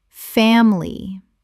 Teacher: Two syllables in natural speech. The middle I is almost always swallowed.